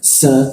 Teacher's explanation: gigi sama gigi diadu, lidahnya diturunkan sehingga rongga udara terbuka dan ada hembusannya cukup kencang. Sa, ya.